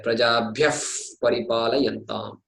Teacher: when the visarga is followed by a pakara, as we have said earlier, the F-like pronunciation should come. You must insert the word F.